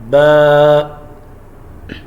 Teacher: یاد رکھیں جب بھی با کو ہم نے ادا کرنا ہے، اوپر والا ہونٹ اور نیچے والا ہونٹ دونوں آپس میں ملیں گے، یعنی دونوں ہونٹوں کو آپس میں ملائیں گے تو با ادا ہوگا